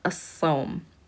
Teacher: it's pronounced with a shadda, and we do not pronounce that lam here. We just skip over to that sad, as-sawm. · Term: sun letter